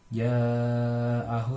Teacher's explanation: termasuk hukum tajwid mad wajib mutasil karena setelah huruf mad ada huruf hamzah, dibaca panjangnya 5 harokat.